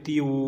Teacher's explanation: ता वाव दो ज़ेर तीव, इतना थोड़ा सा गुन्ना होगा